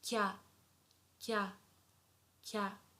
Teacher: Together, if we put them, it becomes kya, kya. So ki plus ya is not kia, it's kya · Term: contracted sounds